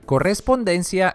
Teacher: Llana o grave, ya que la sílaba tónica es la penúltima.